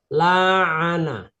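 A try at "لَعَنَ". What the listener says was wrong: Kok panjang?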